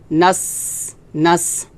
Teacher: নুন সিন জবর নাস, নাস এটা হামস হবে, নাস, এভাবে বাতাস বের হবে